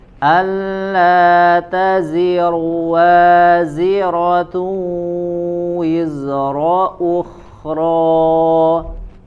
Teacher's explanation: Waziratun ya, ada gunnah di situ ada tambahan gunnah, ditahan.